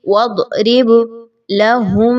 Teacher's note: با کے اوپر جزم کی علامت ہے، اس کو قلقلہ کرتے ہوئے پڑھیے، تھوڑا سا ہلائیے۔